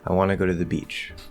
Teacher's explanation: falling intonation at the end of the statement